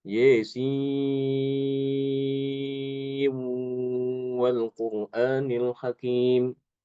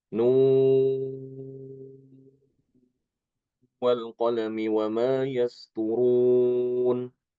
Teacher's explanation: tidak diidharkan tapi diidghamkan disertai dengan gunnah